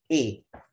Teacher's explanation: imalah itu antara alif dan ya atau fathah kasroh